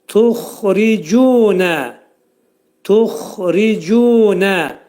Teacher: Tu incə hərfdir, incə samitdir. Xa, boğazın yuxarısından çıxarılır qalın hərif.